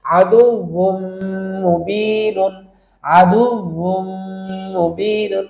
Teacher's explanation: মিম মা ইন, আদুউন, আদুউন ছিল, বদুল পেশ বুন, তাহলে একটা পেশ বাদ, অর্থাৎ নুন সাকিনটা বাদ দিলাম, তাহলে একটা পেশ মিম তাজদিদকে ধরতেছে, আদু ওয়াও মিম পেশ উন, উন বলে এক আলিফ ধরবো ওয়াজিব গুন্নার মতো। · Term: গুন্না সহ ইদগাম